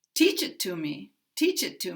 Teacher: In this sentence, I have put 3 unstressed words, and these 3 words will be kind of flow together and sound almost like one word.